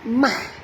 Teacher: bukan moh tapi mah, ya, ringan saja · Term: ha pedas